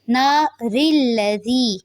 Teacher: را کو پر نہیں کریں گے کیونکہ را کے نیچے زیر آ رہی ہے، تو جب بھی را کے نیچے زیر آتی ہے تو وہ پر نہیں ہوتی.